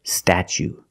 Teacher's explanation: for the second syllable we use the long u like Boot and moon